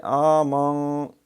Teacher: تو اس میں خیال یہ رکھنا کہ آمن، یہ حمزہ کھڑی زبر آ ہے، یہ کھڑی زبر کا مطلب ہے سمجھیں جیسے اس کے ساتھ ایک اور الف ہوتی ہے، تو ایک الف جتنا بڑھائیں گے